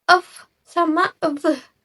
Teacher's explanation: labiodental, yaitu bunyi yang dihasilkan ketika bibir bawah menyentuh gigi atas.